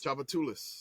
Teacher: So the third syllable is the emphasis on Tchoupitoulas.